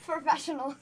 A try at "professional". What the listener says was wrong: No, not per. Professional. Say it with me.